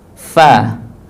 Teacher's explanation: bibir bawah dengan ujung gigi atas ada huruf fa